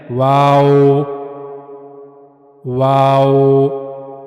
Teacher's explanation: दोनों होठों को गोल किया जाएगा। लेकिन उनको मिलाया नहीं जाएगा एक दूसरे के साथ बल्कि दरमियान में कुछ फासला होगा दोनों होठों के दरमियान। · واو کو ادا کرنے کے لیے دونوں ہونٹوں کو مکمل ملائے بغیر گول گھمانا، یعنی دونوں ہونٹوں کو گول کیا جائے گا لیکن ان کو ایک ساتھ ملانا نہیں ہے، دونوں ہونٹوں کو آپ نے ایک ساتھ ملانا نہیں ہے۔ واو، واو، دونوں ہونٹوں کو گول کیا جائے گا لیکن ان کو ملایا نہیں جائے گا ایک دوسرے کے ساتھ، بلکہ درمیان میں کچھ فاصلہ ہوگا دونوں ہونٹوں کے درمیان۔